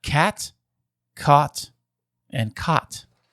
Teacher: you do not have the low back vowel merger